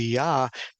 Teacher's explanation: in Hebrew there is no J there's only a y sound so the word would be yah